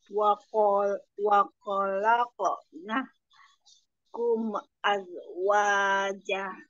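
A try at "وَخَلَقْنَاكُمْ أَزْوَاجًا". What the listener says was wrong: Jadi nanti kho-nya lebih ada getar lagi ya, kho. Karena 2 kali masih kho. Kho, kho.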